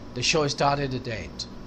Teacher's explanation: Or 8 को soft D करके पढ़ेंगे.